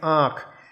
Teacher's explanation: ये हो गया आँख, इसके उच्चारण में मुख के साथ साथ नाक से भी हम इसका उच्चारण करते हैं, यानी कि मुख और नाक दोनों के प्रयोग से इसका उच्चारण किया जाता है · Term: अनुनासिक